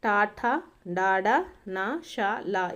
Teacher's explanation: మూర్ధన్యాలు అంటే మనకు మూర్ధము అంటే అర్థం ఏంటండి, శిరస్సు అనమాట, లేదా దవడ మధ్య భాగం నుంచి పుట్టేటటువంటి అక్షరాలను వచ్చేసి మూర్ధన్యాలు అంటారు